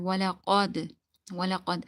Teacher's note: this is qaf, the thick qaf, so you need to read it thicker